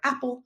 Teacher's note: what's not written is a small vowel sound between the p and the L